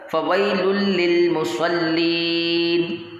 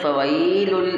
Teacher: یہاں پر یالین کرنا ہے، کھینچنا نہیں ہے